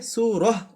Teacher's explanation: থামার জায়গায় যদি গোলতা থাকে তাহলে সেটাকে আমরা তা পড়ব না, পড়ব হলো হা।